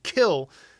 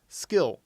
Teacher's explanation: when you say skill, you're not actually aspirating when you say that K. Whereas if you take the S away and you say kill, now there is air coming out of your mouth.